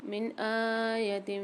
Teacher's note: نون ساکن کے بعد الف یعنی حمزہ آ رہا ہے، یہاں اظہار حلقے والا قاعدہ کریں گے، غنہ نہیں کریں گے